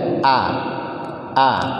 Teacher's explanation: hamzah itu bukan huruf tebal ya, bukan huruf tebal. Jangan sampai dibaca o. Ya, tipis saja. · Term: huruf tipis